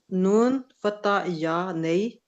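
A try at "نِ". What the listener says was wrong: ये नून कसरा है, ये नून कसरा है, नून कसरा है ये।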